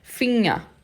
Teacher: E o R no final tem som de A.